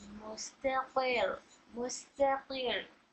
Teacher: तो यहाँ पर रॉ को जब साकिन करते तो यहाँ रॉ को पढ़ने का कौन सा फ़ायदा हो रहा है, रॉ को बारीक पढ़ने का फ़ायदा नंबर 2 हो रहा है, क्योंकि रॉ साकिन से पहले कसरा है।